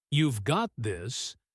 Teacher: Notice how the word got often gets just a tiny bit of extra emphasis, a little stretch, almost like the speaker is physically pushing the words toward the listener with their voice.